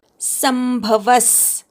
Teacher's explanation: संभवस विसर्गाचा स, इथे स नंतर जो म ला भ जोडलेला आहे तो जोडाक्षर नाहीये, स वरच्या अनुस्वाराचा म झालाय, त्यामुळे स वर आघात येणार नाही, विसर्गाचा स असा उच्चार करायचा